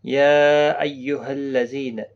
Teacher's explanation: یا یہاں پر مد منفصل ہے، 3 الف کی مقدار کے برابر کھینچ کر پڑھیں گے